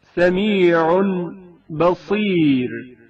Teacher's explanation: تنوین بھی با سے پہلے میم میں بدل جاتی ہے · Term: اقلاب